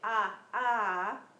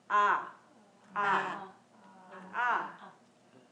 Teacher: vowels it happens pretty naturally so if you say a a it's a guttural sound so it comes naturally from the throat